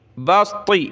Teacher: سین باریک ہے، طا موٹی کرنی ہے، توجہ کے ساتھ پڑھیں گے تو آئے گا، ورنہ آپ سین کو بھی موٹا کر دیں گے، بسط صاد پڑھ دیں گے.